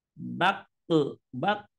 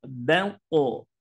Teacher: dibaca tebal tafkim ya sebab saat diucapkan pangkal lidah terangkat ke langit-langit jadi pangkal yang ujung itu terangkat ke langit-langit Nah itu itu